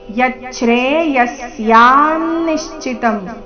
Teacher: ವಿಸರ್ಗದ ಉಚ್ಚಾರಣೆ ಅರ್ಧ ಸ ರೀತಿ